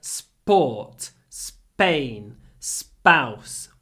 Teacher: sport Spain spouse with no aspiration because it follows an S · the p is not aspirated because it comes after a s. So it sounds a little bit like s.